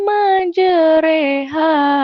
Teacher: dibaca re pada imalah dalam kata majereha